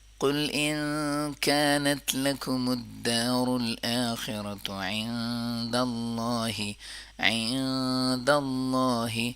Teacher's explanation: اللہ کے نام کو بولڈ کریں گے، پر کریں گے، کیونکہ اللہ کے نام سے پہلے فتحہ ہے